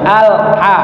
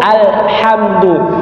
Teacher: tapi kalau alqamariah alhamdu paten lamnya terbaca lam sukunnya terbaca Alha gak boleh dipantulkan karena dia bukan Qalqalah tidak boleh juga digeret Al gak ada cukup alhamdu makanya dibaca